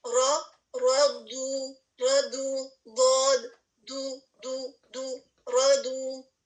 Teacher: ضاد ہیوی ہے, دو, اور اس کے ساتھ آپ نے ہونٹوں کو گول کرنا ہے کیونکہ یہاں پر دمہ آ رہا ہے